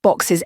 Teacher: boxes ends in a sibilent sound made with your voice box. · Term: sibilant sound